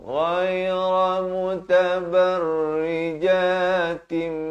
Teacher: Ghair di hujung kerongkong.